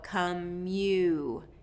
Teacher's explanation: that long vowel at the end of kate, make sure that you get that full movement of the mouth for that long vowel.